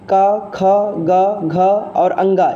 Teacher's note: क वर्ग का उच्चारण कंठ से होता है